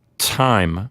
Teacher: your tongue is stopping the air well that's why it's called a stop · For example, if you say time, T-I-M-E, when you pronounce the letter T at the beginning of the word time, your tongue is closing off the front of your mouth, and the air is sort of building up inside until you release it. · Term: stops